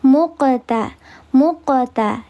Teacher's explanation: Ini adalah qalqalah sugra. Maka dibacanya dia diledakkan atau dipantulkan. Tapi pantulannya natural saja karena di tengah kalimat